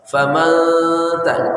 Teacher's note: Nunnya dibaca samar, caranya ujung lidah lurus ke depan. Famanta, nggak boleh naik. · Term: ikhfa haqiqi